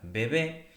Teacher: Por ejemplo, en la palabra bebé no se pronuncia del mismo modo la primera B que la segunda. La primera B es oclusiva, mientras que la segunda B es un poquito más suave, es aproximante. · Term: alófonos